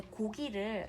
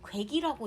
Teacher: 고기를 전라도 가면 많이 이렇게 할머니들이 말씀하시는데요, 괴기라고 얘기를 하세요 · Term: 이모음 역행 동화